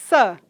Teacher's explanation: o fonema s, que é fricativo, alveolar, desvozeado